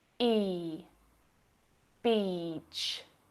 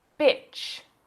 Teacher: If you mispronounce this long vowel sound and use the short I sound, you'll say bitch.